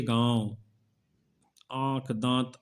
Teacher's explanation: ऐसे स्वरों का उच्चारण नाक और मुंह से होता है और उच्चारण में लघुता रहती है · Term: अनुनासिक